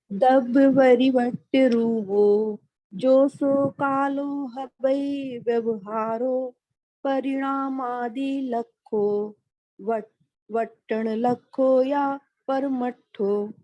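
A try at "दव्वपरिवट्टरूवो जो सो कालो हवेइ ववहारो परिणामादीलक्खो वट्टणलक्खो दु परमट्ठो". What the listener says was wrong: थोड़ा सा लय में आप बिगड़े, मतलब उसका क्रम जो है थोड़ा सा हटा, लेकिन उच्चारण आपने सही किया है।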